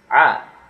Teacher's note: it's like a forced throaty vowel sound. To be technical, it's actually the voiced version of the dotted H, the ha. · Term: ayn